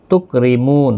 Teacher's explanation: را زیر کی وجہ سے باریک پڑھا جائے گا، واو مدہ ہے، تی یا مدہ ہے، میم ساکن پڑھا جائے گا وقف کی صورت میں، وقف بالاسکان ہوگا۔